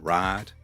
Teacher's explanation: You notice how the I switches to an AH.